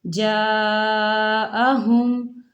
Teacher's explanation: جَاءَهُمْ، جَاءَهُمْ، یہاں الف مدہ ہے، الف مدہ کے اوپر الف مدہ کے اوپر مد ہے تو اسے چار حرکت کے برابر کھینچ کے پڑھیں گے